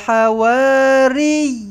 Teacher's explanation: Tekankan sabdu pada ya ini. Okey dan panjangkan yi itu dengan dua harakat mad tamkin.